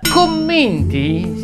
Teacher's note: commenti si pronuncia con la e chiusa